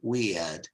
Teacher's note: in British English, notice there's a diphthong, you see, ear. No R and a diphthong, weird. In American English, it's weird, which means strange, unusual, and difficult to explain, like I am.